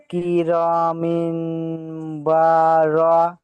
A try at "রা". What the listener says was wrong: কিরমিন ভাই যেখানে টানা আছে সেখানে টান দেন না যেখানে টান নাই সেখানে স্পিড বলেন